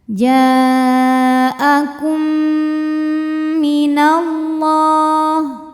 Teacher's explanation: Sebab mim sukun ketemu mim hidup, maka mim pertama dileburkan ke mim kedua, dimasukkan langsung kum disertai bunyi dengung m. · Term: idgham mimi